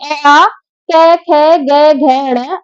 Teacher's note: अ आ क ख ग घ ण और है और कुछ परिस्थिति में विसर्ग कंठ से बोले जाते हैं